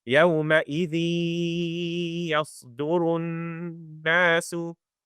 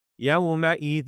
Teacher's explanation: Okay, so if I say يَوْمَئِذٍ, you might be able to tell that there's a little bit of airflow from my nose. There's a nasal sound that follows through, and that's the remnant of the noon.